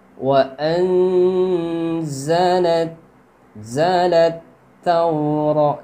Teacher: Jadi nunnya itu dibaca samar dengan dengung, 2 harokat. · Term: ikhfa